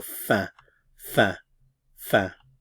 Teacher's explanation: And this sound here, this symbol in the IPA represents the E sound in red in English, so eh. However, with this symbol, that means it's nasalized, so you have to say the eh, but then blow the air through your nose.